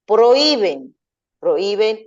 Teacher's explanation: el golpe de voz llega en la I, y la I es una vocal cerrada tónica por la que lleva tilde.